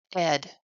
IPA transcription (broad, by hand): ɪd